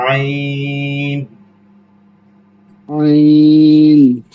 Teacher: আইনটা হচ্ছে একদম হলুকের মাঝখান থেকে